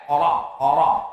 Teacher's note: Ra-nya tafkhim, tebal, bukan rr, bukan.